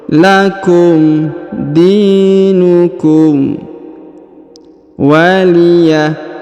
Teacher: Huruf di dipanjangkan 2 harokat ya, karena di depannya terdapat ia sukun.